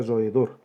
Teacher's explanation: Ejemplo, la palabra roedor tiene 3 sílabas. Hiato entre la vocal abierta O y la vocal abierta E. La sílaba tónica es la última.